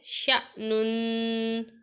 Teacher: اب یہاں پر الف ہے، اس کو حمزہ ہی پڑھا جائے گا، شأنن۔ شین کو لمبا نہیں کریں گے، حمزہ کی طرح پڑھیں گے، اس کے ساتھ جو الف ہے اس کو، شأنن۔